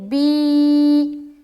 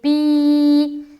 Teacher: کھڑی زیر کو ایک الف کے برابر کھینچ کر پڑھیں گے